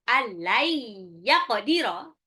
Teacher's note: nun sukun ketemu ya, jadi idgham bi gunnah, dilebur dan ditahan. Allai yaqdira, qafnya lagi qalqalah.